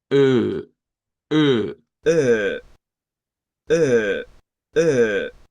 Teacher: O sea, si nos vamos a la tablita, eh, ese símbolo que parece como una O con una E es este de acá. O sea, es la misma E que usamos en ELF, pero en vez de tener los labios estirados, ahora los redondeamos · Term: una e redonda, O con diéresis